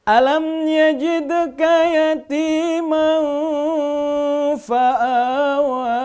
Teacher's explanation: Ikhfa itu samar, melafazkan bunyi tanwinnya samar karena bertemu dengan huruf ikhfa.